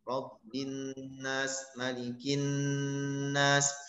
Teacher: Ditekan, ditahan yang lama sehingga mengeluarkan bunyi dengung. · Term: gunnah